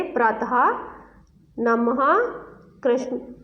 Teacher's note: आगे है विसर्ग दिए गए हैं यहाँ पे, जो दो बिंदु पीछे लगाए जाते हैं, केवल संस्कृत से आए हुए शब्दों में प्रयुक्त होते हैं, जैसे प्रातः, नमः, कृष्ण आदि। ये बिंदु जब हम शब्द के पीछे लगाते हैं तो इसमें ह की हल्की सी ध्वनि आती है।